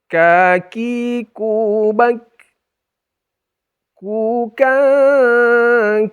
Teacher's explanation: mulut bagian atas itu Jadi kalau kov itu paling belakang betul lidah kita ini agak maju sedikit tapi masih kategori pangkal lidah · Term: Kaf